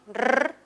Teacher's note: Luego está el dígrafo doble R, que suena como una vibrante múltiple